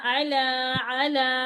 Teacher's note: लाम मोटा नहीं होगा